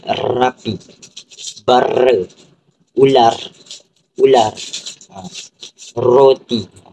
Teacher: getaran yang berlaku ni adalah getaran di antara lidah dan juga gusi. Kebiasaannya yang akan mengeluarkan bunyi R.